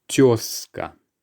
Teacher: this word is a bit of an exception because the z sound is actually s in this case.